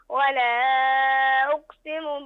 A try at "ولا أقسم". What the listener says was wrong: ولا أقسم، بين القلقلة في القاف، ولا أقسم.